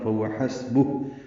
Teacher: ہا پہ سانس جاری رکھیں گے پڑھتے ہوئے